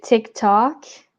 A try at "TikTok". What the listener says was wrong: encore là, le T, j'entends, tu sais, moi je disais TikTok, le T très prononcé du québécois. Fait que encore là, j'entends un T plus subtil. TikTok.